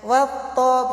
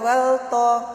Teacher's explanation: Cara membacanya langsung melebur masuk ke huruf ta-nya. Wat-ta, bukan wal-ta. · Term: idgham lam ta'rif syamsiyah